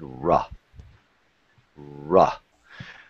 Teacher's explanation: Remember, on the R sound, if this is the roof of your mouth, the tongue is being bent back as far as you can, and then you come forward